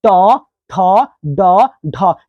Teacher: ट ठ ड ढ इसको बोलते समय जीभ जो है हल्की सी मुड़ जा रही है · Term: मुर्धा